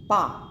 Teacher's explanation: ब का जब आप उच्चारण करेंगे तो दोनों ओष्ठों का प्रयोग हो रहा है